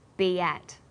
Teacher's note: B ends with the vowel sound e, and at begins with vowel a. Linking these words together with the y sound, we have be at.